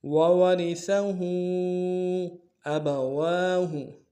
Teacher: الٹا پیش کے اوپر مد بھی ہے چھوٹا، کم سے کم دو الف میں کھینچیں گے